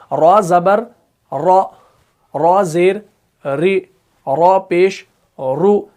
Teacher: आप देखिए, पढ़कर देखिए कि जब भी आप रॉ को पढ़ते हैं ना तो क्या हो रहा है कि जुबान की जो नोक है ना ये बार बार ऊपर टच हो रही है। इसके अंदर क्या है? कपकपी है, कपकपाहट है, इसी को कहा जाता है तिकरार